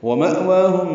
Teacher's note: ومأواہم میں مأوا میں حمزہ ساکن جھٹکے سے ادا ہوگا، وا کھڑا زبر 2 حرکات لمبا ہے، ہم میم ساکن پہ اظہار شفوی.